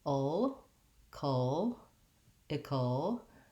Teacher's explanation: the ickle syllable, again, is short and reduced with the short lax I, and a K sound and a syllabic L, which is basically a little small schwa like and L.